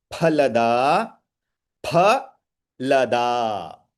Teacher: You have to steal that pause for the mahaprana. Otherwise, the da will sound mahaprana actually.